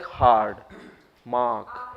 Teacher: R is half silent, at least half silent.